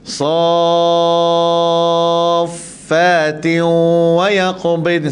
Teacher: Pastikan 6 harakat, tak boleh kurang.